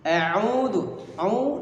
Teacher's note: audu dibaca panjang dua harakat sama dengan satu ayunan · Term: mad asli